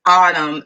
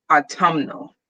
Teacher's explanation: you're adding literally one syllable that's it you're just changing the stress on the word